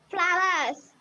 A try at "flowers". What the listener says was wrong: Flowers. Don't say verse. Flowers.